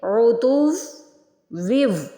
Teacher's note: جب ویو پڑھیں گے تو غنہ کریں گے، یعنی دیر لگائیں گے اور ناک میں آواز لے کے چاہیں گے۔